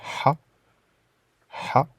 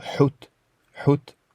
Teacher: C'est un H fortement expiré. Donc comme dans le mot Hout.